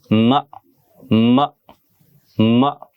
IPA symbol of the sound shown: m